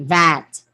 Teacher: Voice oral labiodental fricative.